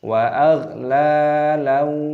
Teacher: fathah tanwin bertemu dengan wawu, hukumnya dibaca idgham bi gunna, dimasukkan dan disertai berdengung.